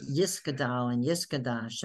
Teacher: So the Tav, they pronounce like a S. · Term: the Ashkenazic way